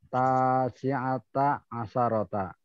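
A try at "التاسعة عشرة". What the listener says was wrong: Nah, mumtaz.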